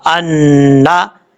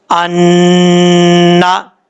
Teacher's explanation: یہ نون مشدد کا غنہ ہوگا، نون کے اوپر شد ہے، غنہ کریں گے ایک الف کی مقدار